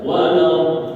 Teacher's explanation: Waladdallin dinaikkan, kemudian ditahan, baru diteruskan. · Nabar itu agak dikencengin suaranya, agak dinaikkan nadanya. Waladdallin itu nabar namanya, dinaikin dikit suaranya.